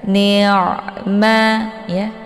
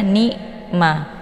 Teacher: Posisi ain ini letaknya di tenggorokan tengah ya, bukan lewat jalur hidung. Jadi jangan dibaca ni'ma.